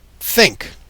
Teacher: course a teeth sound and so if you place your tongue tip of your tongue against your top front teeth breathe past it you get the sound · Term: theta